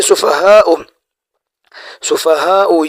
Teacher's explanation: سفہاء یہ ہے بڑا مد، اس کو ہم 5 الف کے بقدر کھینچیں گے،